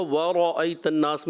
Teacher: واؤ پر تو ہونٹ گول ہوں گے، را پر گول نہیں ہونا چاہیے۔